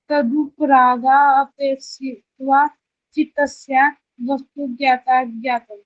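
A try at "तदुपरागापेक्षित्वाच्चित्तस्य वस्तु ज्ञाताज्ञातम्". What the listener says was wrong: आपने एक और गलती कर दी अपेक्षित बोल दिया तो है ही नहीं इसमें फिर से बोलने की कोशिश करो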